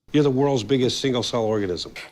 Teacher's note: the stress in organism falls on the first syllable